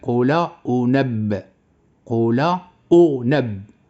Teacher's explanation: النبر غيكون على اللام